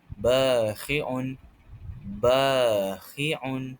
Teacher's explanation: Jadi cara bacaan untuk membaca mat asli ini ialah kita perlu membacanya panjang sebanyak dua harakat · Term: mad asli